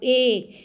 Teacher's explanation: है क क में भी और तालव्य में भी तो ए ए बोल के देखिए तालू की भी जरूरत होगी